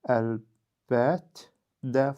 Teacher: İkinci samit özünün cingiltili qarşılığı ilə əvəz edildi. Yəni kar cingiltili ilə əvəz edildi.